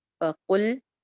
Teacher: قاف کی پیش کو لام سے جوڑ رہے ہیں، لام کو جما کے رکھنا ہے، چلانی نہیں آواز